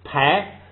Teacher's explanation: 后加字是拉，所以他就把这个啊变成了哎，就是汉语拼音的哎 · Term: 变音